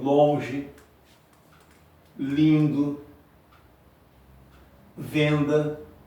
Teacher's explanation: Longe é um O nasal, lindo é um I nasal, venda é um E nasalizado. É apenas um som, é apenas um fonema. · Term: fonemas nasais